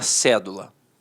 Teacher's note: a palavra cédula notoriamente é uma proparoxítona a sílaba tônica está na antepenúltima sílaba